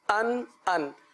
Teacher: حمزہ 2 زبر ان، حمزہ نون زبر ان، حمزہ 2 زبر ان کی جو آواز ہے وہ حمزہ نون زبر ان کی طرح ہوگی، ان ان۔ تو آخر میں تنوین میں نون ساکن کی آواز آتی ہے، نون ساکن کا اظہار ہوتا ہے